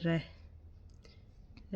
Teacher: चूँकि इस वर्ण का उच्चारण करते समय जिह्वा में कंपन भी होता है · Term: प्रकंपित व्यंजन